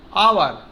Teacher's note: It will be noticed that the word hour, honest, air begins with a vowel sound, as the initial consonant H is not pronounced